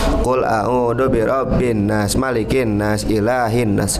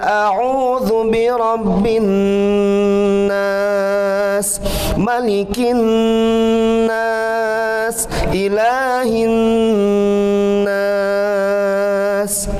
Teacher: dengung ditahan tiga harkat